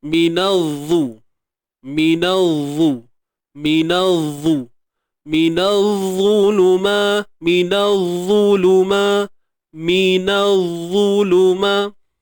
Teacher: Na ni bunyinya biasa je. Na. Nak masuk je pada huruf dha tu dia terus tebal. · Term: alif lam syamsiyah